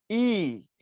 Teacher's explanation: জীব যখন উপরের দিকে থাকে এবং জীব যখন সামনের দিকে থাকে, যেমন তুমি যখন বলবা ই, আমার দিক তাকাও, ই, ই বললে জিহ্বাটা উপরে চলে গেছে দেখো, ই, এবং সামনের দিকে ঠেলে আসছে